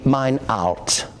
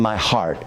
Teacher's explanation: They do not pronounce the H at the beginning of the words, and so it would be mine out, instead of my heart.